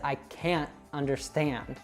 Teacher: because we have that glottal t and then it's followed by a vowel, they connect.